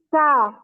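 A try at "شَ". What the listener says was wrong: Kok ini ke ujung lidah malah. Gitu ya. Sha.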